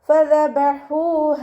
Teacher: ഫ ഉച്ചരിക്കുമ്പോൾ നമ്മുടെ മേലെ മുൻപല്ലിൻ്റെ അറ്റം താഴെ ചുണ്ടിൻ്റെ ഉൾവശത്ത് നനഞ്ഞ ഭാഗത്ത് വെക്കുക